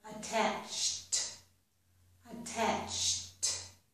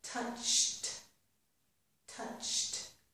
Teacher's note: If the verb ends in the ch sound, then ed will sound like t.